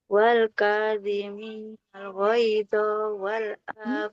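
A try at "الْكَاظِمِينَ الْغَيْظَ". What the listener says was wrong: Allahnya Lo-nya nggak boleh dipanjangkan Ibu, karena huruf fathah tidak ada alifnya. Wal kadhiminal ghaidha wal 'afina 'anin nas.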